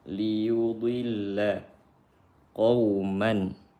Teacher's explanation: Qauman tanwin berjumpa ba. Kata tanwinnya diganti dengan mim. Qauman iqlab.